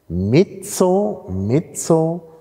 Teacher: mezzo ist mit offenem E und wird mit offenem E gesprochen in der Toskana, in Mittel- und Süditalien.